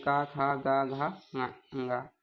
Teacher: ये का वर्ग हमारे कंठ से बोले जाते हैं